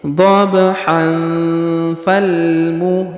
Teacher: kalau kita sambung didengungkan dan disamarkan ya karena ini kena hukum dengung dan samar namanya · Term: ikhfa